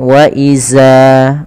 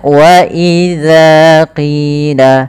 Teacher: Jangan sampai membacanya dengan wa iza. Ini sering terjadi kesalahan yang terjadi, yaitu mengganti huruf dzal diganti dengan huruf zai.